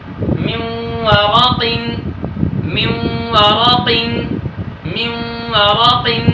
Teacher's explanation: نون ساکن کے بعد واو آیا ہے، نون کا واو میں ادغام مع الغنہ ہوا ہے